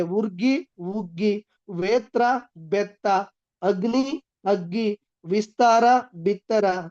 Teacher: ಹಳೆಗನ್ನಡದ ದೀರ್ಘ ಸಮಾಸ ಪದಗಳು ಹೊಸಗನ್ನಡದಲ್ಲಿ ರಸ್ವಗಳಾಗಿ ಬದಲಾವಣೆ ಆಗ್ತವೆ ಕ್ರಮದಪ್ಪು ಕ್ರಮ ತಪ್ಪು ವ್ಯಂಜನಗಳು ಸಮರೂಪ ಧಾರಣೆಯನ್ನ ಹೊಂದಿ ಹೊಸಗನ್ನಡದಲ್ಲಿ ಸರ್ವೇಸಾಮಾನ್ಯವಾಗಿ ಲೀನ ಆಗ್ತವೆ